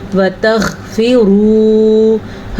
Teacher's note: جہاں پہ غین پہ آپ کی آواز بند ہو رہی ہے وہی غین کا مخرج ہے، پریکٹس کریں۔ وَتَغْفِرُوا، حلق کے ابتدائی حصے سے